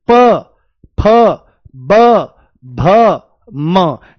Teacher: प वर्ग का उच्चारण होठों से ही होता है। देखो कैसे? प फ ब भ म यानी कि दोनों होठ आपस में लगते हैं। वायु यहां पर स्पर्श करती है तभी।